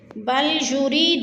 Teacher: من قسورہ، بل یرید کل امرئ منہم ان یؤتی صحفا منشرہ، بل یرید، را یا زیر ری، ادھر اس کو کھینچ رہے ہیں، یا مدہ ہے، یا ساکن سے پہلے را کے نیچے زیر ہے تو یا مدہ، یا مدہ کو ہم نے ایک الف دو حرکات کے برابر کھینچ کر پڑھنا ہے